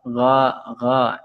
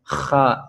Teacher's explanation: Kemudian bedanya tadi huruf gha tidak keluar nafas, huruf kha itu dengan menghembuskan nafas